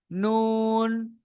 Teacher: জিভের আগা এবং তার বরাবর উপরের তালুর সাথে লাগিয়ে উচ্চারিত হয় নুন। তাহলে জিভের আগা, এই এই উপরের সোতায় একদম সোজা উপরের তালুর সাথে লাগে নুন।